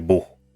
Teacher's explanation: For example, in the case of German, you have the velar affricat, usually with vowels that are pronounced more back in the mouth.